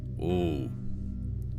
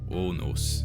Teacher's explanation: O was pronounced as a single sound, single vowel, so not like in English, more like O.